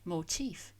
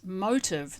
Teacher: It has a distinct F sound at the end, not like motive with a voiced sound. And the stress on the second syllable, whereas motive, the reason for doing something, the cause for the crime, of course, stresses the first syllable.